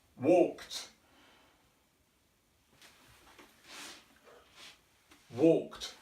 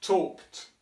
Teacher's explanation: the end part is voiceless which means we don't use the body air breath to say this part of the word